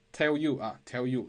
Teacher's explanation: 所以当前面的辅音遇到半元音耶加上后面的元音的时候，我们也会把这两个单词进行一个连读，类似于辅元连读